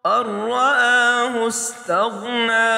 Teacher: اسی طرح جب اس حمزہ کو ملائیں گے نون سے نہیں ملائیں گے، تشدید ہونے کی وجہ سے اس حمزہ کو را سے ملائیں گے، نون کی آواز ختم ہو جائے گی، اور را کے اوپر زبر ہے اس کو موٹا پڑھیں گے، الف کے اوپر کڑی زبر ہے یعنی حمزہ کے اوپر، تو اس کو بھی ہم 1 الف کے برابر کھینچ کر پڑھیں گے۔